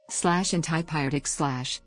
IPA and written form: ˌæntipaɪˈrɛtɪk (antipyretic)